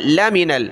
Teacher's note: انک لمن نون پر تشدید غنہ ہوگا، انک لمن، لام زبر لا، میم زیر می، نون لام زبر نل، لمن، لام کو کھینچنا نہیں ہے، لا نہیں پڑھنا، اس سے معنی تبدیل ہو جائیں گے۔